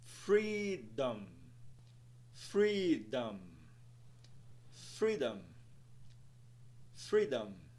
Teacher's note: a primeira sílaba será mais alongada e pronunciada em um tom mais alto